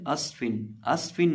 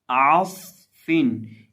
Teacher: ایک تو عین کو حلق کے درمیان سے ادا کریں گے، دوسرا صاد میں سیٹی پیدا کریں گے، اور صاد کو موٹا بھی کریں گے